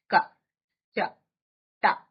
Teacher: తక్కువ ఊనికతో క చ ట అలా మామూలుగా మాట్లాడామ అనుకోండి దాన్ని అల్ప ప్రాణము అంటారు. తక్కువ శక్తిని ఉపయోగించి పలుకబడేది.